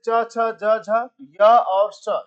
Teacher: च छ ज झ य और स ये तो तालव में आ जाएंगे। तालव तालु वाले भाग से हो जाता है।